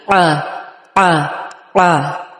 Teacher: عین کی آواز تھوڑی سی کمپلیکیٹڈ ہے، نگلنے کی سی آواز ہے، ہمارے حلق سے نکلنی چاہیے، منہ سے آ نہ نکلے بلکہ حلق پہ پریشر ڈال کے آ آ آ.